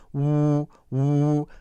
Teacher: But it's very important when it is a W sound to make sure it's a clear, distinguished W sound with the lips pushed forward, air coming out, and the cheeks slightly moved by the air moving out, right?